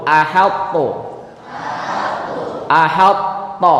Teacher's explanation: idghamnya tidak sempurna alias masih menyisakan sifat huruf sebelumnya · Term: idgham naqis